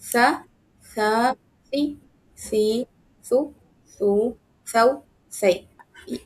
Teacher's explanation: तो आप सा जब बोलेंगे ना, तो थोड़ी-सी ज़बान आपकी दाँतों में रहेगी, ज़बान का कोना लगेगा और मसूड़े भी इसमें इन्वॉल्व होते हैं, इसीलिए उसको लिस्सा भी बोलते हैं।